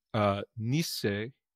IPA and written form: niː s.se (Nisse)